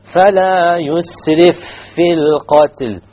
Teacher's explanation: You will merge the two fa's together. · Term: idgham